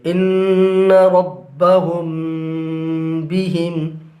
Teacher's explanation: یہاں پر میم ساکن کے بعد با آ رہا ہے، لہٰذا میم ساکن کو غنہ کے ساتھ پڑھیں گے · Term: इख्फ़ाए शफवी